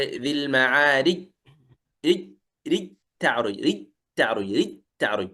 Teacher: كأنه يقرأها تاء مشددة